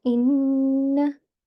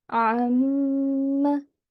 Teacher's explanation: So it would be read as in, and meme would be read as am. Okay, so you need to make a nasal sound that will be sustained for 2 seconds. So one common error is to not pronounce a meme or noon mushaddad without a gunna for 2 seconds.